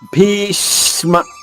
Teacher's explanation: ష రెండు షాలకు సరిపడే ఉచ్చారణ నొక్కి చెప్పాలి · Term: ద్విత్వం